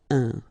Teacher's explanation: keep in mind that it goes in your nose, so you don't hear any N when I pronounce it, un. And then C plus R will produce the sound cr, craindre. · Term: nasal